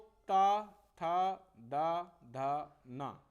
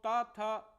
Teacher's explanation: हमारी जीवा क्या कर रही है दांतों से टकरा रही है